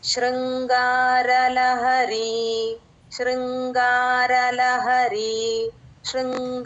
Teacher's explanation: దగ్గరగా వినపడాలి. English alphabets ప్రకారం ఎస్హెచ్ లాగా పలకాలి. శృంగార మెలకశ కింద రుత్వం ఉందండి ఉకారం రాకుండా ఇ కి ఉ కి మధ్యలో శృంగార శృంగార ఉ అన్నట్టుగా కాకుండా శృంగార అలా మధ్యస్తంగా వినిపించాలి. శృంగార లహరి